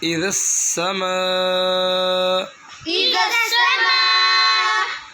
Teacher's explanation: ما ميم ألف مد زبر ما اذا السماء إذا السماء اب میم کو اس لیے لمبا کیا ہے کیونکہ الف کے اوپر مد آ گیا